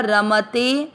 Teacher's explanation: ए की मात्रा ते दीर्घ इसका उच्चारण का समय र और म से अधिक होगा